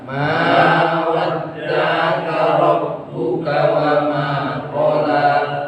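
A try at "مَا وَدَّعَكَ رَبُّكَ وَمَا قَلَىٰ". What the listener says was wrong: wa ma qala. Qafnya terbalik. Sekali lagi.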